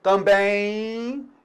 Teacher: Note então que o M em final de palavra, ele também pode produzir o som I. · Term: I semivogal